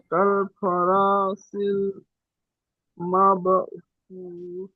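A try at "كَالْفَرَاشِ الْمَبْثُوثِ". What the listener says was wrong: মাশাআল্লাহ, সুন্দর হয়েছে এটা।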